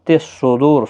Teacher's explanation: صاد حروف مستعلیہ ہے، پر پڑھا جائے گا